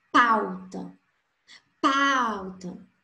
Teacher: No ditongo decrescente, primeiro vai vir a vogal, depois a semivogal. Então, na palavra pauta, au, A é a vogal, U a semivogal.